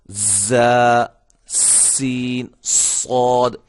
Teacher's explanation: یہ 3 حروف جو ہیں یہ جب ادا ہوتے ہیں تو سیٹی کی آواز پیدا ہوتی ہے.